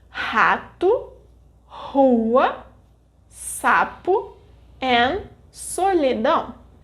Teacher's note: When these consonantes are in the beginning of the word, they will have the aspirated and sibilant sounds, H and S, respectively